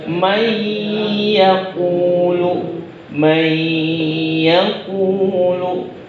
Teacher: Jadi ada gunnah atau dengung di situ.